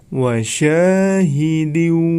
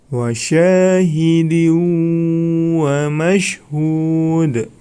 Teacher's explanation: Nah, di situ terdapat tanwin bertemu dengan huruf wawu ya. Itu termasuk hukum bacaan idgham bi gunnah ya. Maka cara membacanya harus dengan mendengung.